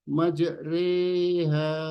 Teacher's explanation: Ro fathah tidak boleh dibaca yang tertulis majroha. Ro fathah harus diimalah, memiringkan bacaan ro fathah menjadi re. Ro fathah ada tanda wakaf fathah berdiri, ini dibaca 2 rakaat yaitu re.